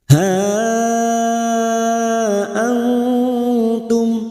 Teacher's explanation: bertemunya Mad dengan Hamzah di lain kata ha Antum kita panjangkan lima harakat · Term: Mad Jaiz munfasil hukmi